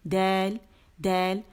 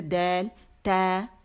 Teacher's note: دال اور تا کی آواز جو ہے وہ باریک ہے